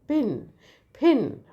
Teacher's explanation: So that's a aspirated P.